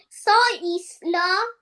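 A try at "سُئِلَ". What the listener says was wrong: Seam has pesh on it. Round your lips. Su'ila. Su'ila. Please read visual sounding letter. Seen as visual sounding letter. Su'ila. And tell me, will be pronounced this ya?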